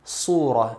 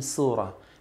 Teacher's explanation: the sad in the word surah should be pronounced in a heavy manner. Surah, and not in a light manner with a seen surah, because doing this will change the meaning.